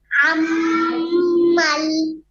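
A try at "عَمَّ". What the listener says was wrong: আম্মাল তো নাই, লাম তো নাই, আম্মা আছে।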